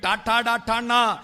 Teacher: ആ നാവിന്റെ അറ്റം മൂർദാവിൽ കുത്തിയിട്ട്